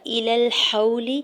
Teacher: الی الحول، حمزہ کی زیر کو جلدی سے ادا کرنا ہے، لام کی زبر کو لام ساکن کے ساتھ ملاتے ہوئے پڑھنا ہے۔ واو ساکن سے پہلے زبر ہے تو یہاں پہ واو لین ہو رہا ہے، نرمی سے موڑتے ہوئے ادا کریں گے، لام کی زیر کو بغیر کھینچے ہوئے ادا کرنا ہے۔